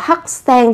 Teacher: Ở đây ta sẽ có 학생 thì các bạn cần chú ý gấp đôi phụ âm sờ lên. Đó là bởi vì vị trí bắt chim chúng ta sẽ có phụ âm cờ như thế này.